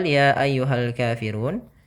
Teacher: ya ayyuhal Kafirun ya ini kita panjangkan sepanjang 4 harokat ya empat harakat karena di sini dinamakan dengan Mad jaiznya Mad Jaiz Mun fasil